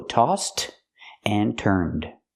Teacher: With turned, the n has a voiced sound. So we use the d sound for the past pronunciation of ed.